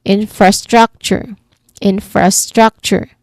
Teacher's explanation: Okay, this word has two level stress. So the first syllable has a stronger emphasis